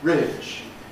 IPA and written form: rɪʤ (ridge)